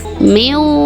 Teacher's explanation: nunnya ini dibacanya tidak jelas tetapi didengungkan antara 1 atau 1,5 alif atau 2 sampai 3 harokat. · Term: idgham bigunah